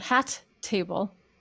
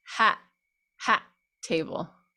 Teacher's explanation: this glottal onset and offset stops the air fully because it's such a heart attack of the vocal folds that you're actually closing your throat for a second half a